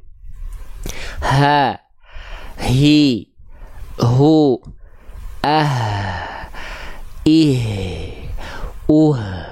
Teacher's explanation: hak besar dilafalkan dari pangkal tenggorokan dan mengalirkan karakteristik nafas yang biasa